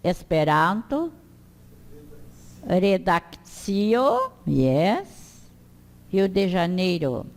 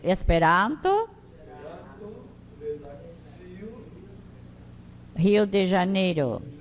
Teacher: O R, então, que é o Rô, deve vibrar num som intermediário entre careta e carreta. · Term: R simples